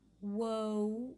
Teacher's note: when you say the w sound rounded lips a long diphthong whoa i close it to an oo sound